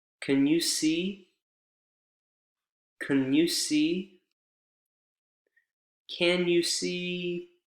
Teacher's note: Can is reduced to kun.